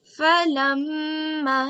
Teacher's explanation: This is Ghunnah. So we do 2-second nasal sound as we have learned in today's rule.